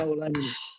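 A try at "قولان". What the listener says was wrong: Enggak usah seperti baca Quran. Ini biasa aja nih karena bukan teks Al-Quran. Rajahuha qaulani.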